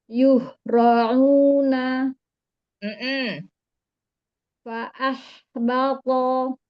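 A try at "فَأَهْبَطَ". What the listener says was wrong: Fa'ah. Sebenarnya ketika ha sukun jangan tarik nih. Jangan fa'ah. Fa'ah.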